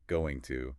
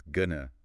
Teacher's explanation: listen for that schwa sound. It's not going to, it's gonna.